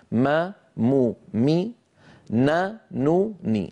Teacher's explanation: أنقص ما تكون يعني أقصر ما تكون في الميم والنون المتحركتين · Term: أقصر الغنن